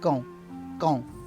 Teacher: sound C and then the last syllable gong gong is nasal it's a nasal sound there again that sound from the back of your nose and the back of your throat